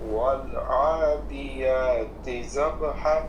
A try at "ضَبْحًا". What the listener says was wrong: ضاد موٹا، والضالین جیسے پڑھتے ہیں ویسے ہی ضاد ہے، ضبح، زب نہیں پڑھنا،